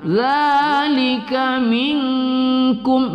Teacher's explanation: minkum nun sukun bertemu kaf kita baca berdengung pada ikhfa hakiki. Zalika minkum, mim sukun bertemu hamzah kita baca tidak berdengung pada izhar syafawi ya.